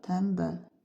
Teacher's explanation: Sözdəki t kar n b l sözdə n samiti yoxdur. Tələffüzdə m var.